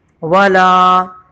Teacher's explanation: واو پہ سے گزریں گے، لام کو کھینچیں گے